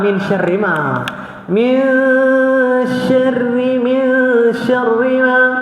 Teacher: Dia sebab ra tu baris bawah. Walaupun tu baris atas, tapi di ra tu baris bawah dia jadi nipis.